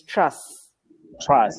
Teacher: to say trust you say trust without the T at the end